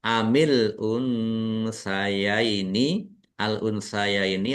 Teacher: nun sukun bertemu dengan huruf sa bacaan ikhfa dibaca samar-samar